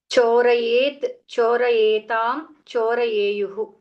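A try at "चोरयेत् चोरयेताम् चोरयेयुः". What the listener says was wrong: Correct.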